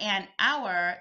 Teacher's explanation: But an hour, the H is silent.